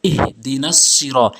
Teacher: এই হাটি হলকের শুরু থেকে উচ্চারণ করবেন